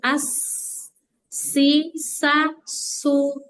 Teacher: Shad dan huruf sin dua-duanya ada nafas.